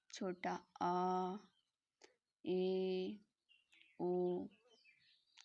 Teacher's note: मतलब जब हम इन्हें बोलते हैं तो हमारा मुख पूरा नहीं ओपन होता है, हमारा मुख आधा ओपन मतलब आधा ओपन होता है, उसे हम अर्ध संवृत स्वर कहते हैं।